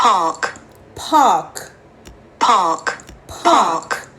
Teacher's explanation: E logo depois vem o R, ou seja, quando o R vem precedido de uma vogal, geralmente A e O, você prolonga o som da vogal, mas você não pronuncia o R. Essa é a pronúncia britânica.